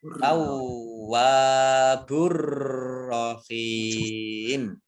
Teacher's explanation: mat tabi'i bertemu dengan huruf terakhir yang dibaca sukun karena wakof, maka menjadi mat arid lis sukun, dibaca panjang 2, 4 atau 6 harokat · Alif lamnya alif lam syamsiah tidak dibaca, langsung masuk ke huruf ro, huruf berikutnya yaitu ro, ditandai dengan ada tasdid roknya. Roknya dibaca double.